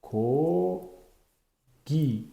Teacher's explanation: bu harfimiz so'z boshida K o'qiladi, ikkita ulli orasida G o'qiladi. Buni namunasini yozib olsanglar bo'ladi.